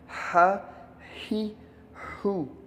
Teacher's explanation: ہا کی آواز درمیان حلق سے رگڑ کھا کر نکلتی ہے، جیسے ہا زبر ہا، ہا زیر ہی، ہا پیش ہو، ہا ہی ہو۔